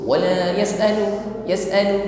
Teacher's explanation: huruf sin sukun, nampak sifat hamas, kita alirkan nafasnya. Tidak terburu.